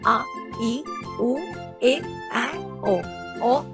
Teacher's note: दो दीर्घ स्वर लॉन्ग वोवेल्स जिन स्वरों के उच्चारण में ह्रस्व से दो गुना समय लगता है तथा जिन्हें कुछ खींच कर बोला जाता है उन्हें दीर्घ स्वर कहा जाता है। हिंदी में आ इ उ ए ओ ओ ये सात सात दीर्घ स्वर हैं।